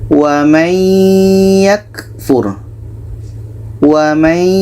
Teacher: surah Ali Imran ayat 19 ini ada nun mati bertemu ya jadi bunyi Nun ini kita masukkan ke ya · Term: Idam bunah